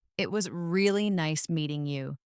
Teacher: Stress really and nice to make it sound warmer.